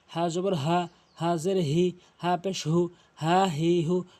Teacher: হলকে শুরু থেকে উচ্চারণ করবেন